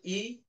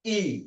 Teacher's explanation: আসলে আমরা যে দুটো ই এর কথা বলছি, হ্রস্ব ই এবং দীর্ঘ ই, এই দুটো আসলে একই ধ্বনি। ধ্বনি এক, একটা শর্ট বা হ্রস্ব, আর একটা লং বা দীর্ঘ। মানে উচ্চারণ করার সময় আমি বাতাসের চাপ একটু কম দিচ্ছি, বাতাসের চাপ একটু বেশি দিচ্ছি।